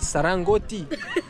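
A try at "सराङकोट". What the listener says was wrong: No, Koti. Court, no Koti.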